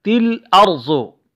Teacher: ارزو کی را موٹا پڑھا جائے گا اور ضاد موٹا پڑھا جائے گا